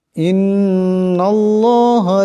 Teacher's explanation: নুন মুশাদ্দাদকে একালে পরিমাণ গুণনা করিয়া পড়তে হবে